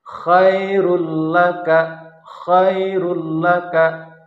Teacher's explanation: kita akan membahas ee contoh-contoh yang merupakan idgham Bil guna jadi melebur tetapi tidak disertai dengan dengung